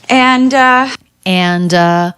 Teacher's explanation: it's not that common to hear the d in the word and but she does do it